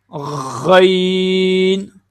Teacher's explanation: غین کا مخرج جو ہے یہ گلے کا سب سے اوپر والا حصہ ہے